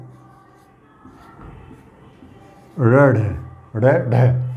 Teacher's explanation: उच्छिप्त का अर्थ होता है ध्वनि फेंकी हुई सी महसूस होती है, या ताड़न मतलब तड़ित, बिजली की गति के समान झटके के साथ में, बिजली की गति के समान, तड़ित की गति के समान जीभ झटके के साथ में नीचे गिर जाती है, अर्थात जीभ ऊपर वाले कठोर तालु को स्पर्श करते हुए नीचे की तरफ आ जाती है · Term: उच्छिप्त व्यंजन